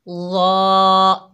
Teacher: देखिए, सा और ज़ाल को जब हमने पढ़ा तो हमारी आवाज़ नीचे है, ऊपर नहीं उठी, नीचे रही। लेकिन जब हमने ज़ा को पढ़ा है तो हमारी आवाज़ जो है ऊपर उठी है। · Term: हरूफ इस्ताला